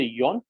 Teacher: when you say yawn you'll notice that more towards the middle part of your tongue is touching the teeth